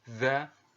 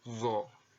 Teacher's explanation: Yang membedakan adalah bahwa dha ini terdengar lebih tipis dibandingkan dengan huruf zo. Jadi mirip, ya, hampir mirip.